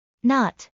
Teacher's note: In not, the t is extremely weak and barely audible.